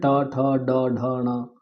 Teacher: ट पूरा वर्ग, ट ठ ड ढ ण, र और श, ये मूर्धा के द्वारा उच्चारित होते हैं